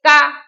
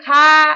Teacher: का इसमें कम समय लगा फिर खा इसमें ज्यादा समय लगा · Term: अल्प प्राण